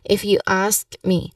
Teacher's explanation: Now the emphasis here is on the word ask.